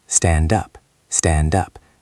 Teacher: This ends with a D and starts with a U. So the D moves over.